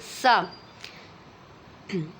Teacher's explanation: سین میں سیٹی نکلتی ہے، صحیح ہے؟ سین زبر سا۔